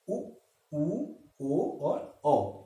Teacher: इसका उच्चारण करने पे हमारे ओष्ठ का जो शेप है, जो स्थिति है, वो गोलाकार आभास होता है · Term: वर्तुल